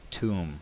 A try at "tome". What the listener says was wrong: Yes, that's how you pronounce it. It's tome, not tomb. Tomb is a separate